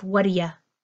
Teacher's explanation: the T and the D pulling together for one single D sound